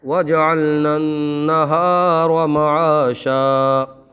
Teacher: یہ نون مشدد ہے، اس میں گنہ کر کے پڑھیں گے اور را کو پر پڑھیں گے